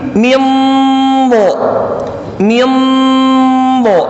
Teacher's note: Min do, tebal huruf dotnya, ikhfa, samar-samar huruf dotnya.